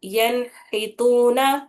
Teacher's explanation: نون کی آواز کو ظاہر کرنا ہے بنا غننے کے پڑھنا ہے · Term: اظہار